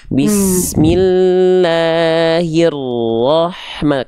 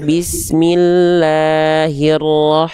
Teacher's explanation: Tekan lagi, tekanannya kurang. Jadi, kadar tekanan lam dan ro itu sama-sama. Jangan sampai dia di sini jadi kadar tekanannya kurang nyepetin gitu ya. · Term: tasdidnya